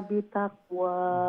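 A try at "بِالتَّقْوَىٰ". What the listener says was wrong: বিতাকওয়া, তার উপরে তশদিদ দেন নি, অর্থাৎ দুইটা তা উচ্চারণ করা লাগবে। বিত হইলে পয়লা তা উচ্চারণ হইল বা তাজের বিত, আর এরপরে তাক হইলে দ্বিতীয় তা।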